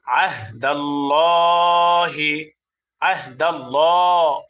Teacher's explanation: আল্লাহর সাথে লামকে পুর করে পড়েছি। অর্থাৎ মোটা করে পড়েছে। কেন? কারণ আল্লাহর সাথে লামের পূর্বে জবর আসছে।